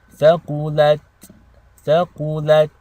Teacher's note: The ta sakina, you want to make sure when you stop on this temporarily, you have air leaving your mouth. Okay, so breath is continuous.